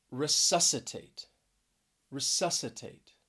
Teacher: stress is on that second syllable and this is a four syllable word